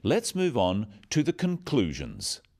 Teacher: Stressing conclusions because it's the key word in this sentence.